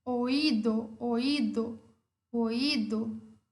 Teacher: Só que a fechada, ela não é uma vogal fraca, ela é uma vogal forte, ela é uma vogal tônica. Por isso, o acento cai sobre ela, sobre essa vogal fechada, e temos o hiato